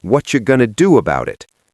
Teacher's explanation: The do about it turns into do about it. We use a flap t on the word about. So the whole sentence becomes what you going to do about it.